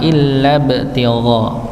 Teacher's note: masuk kepada huruf ba yang dia mempunyai sifat qalqalah